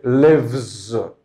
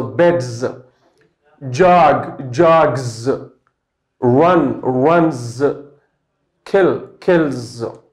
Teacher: Because this noun ends with the voice consonant and, you know, there's vibration when you pronounce it, and it continues. The vibration continues, and it's pronounced like z sound. · there's letter S, but it is pronounced like Z sound